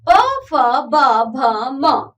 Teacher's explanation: पा वर्ग के व्यंजन होंठ को स्पर्श करके बोले जाते हैं।